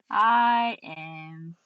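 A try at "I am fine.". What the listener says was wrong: No. am fine. There's no break. I cannot have a break. when you do that, you can't stutter. You not only won't stutter, you can't stutter.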